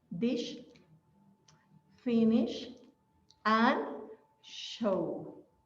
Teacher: it's going to be sh with no vibration, as in dish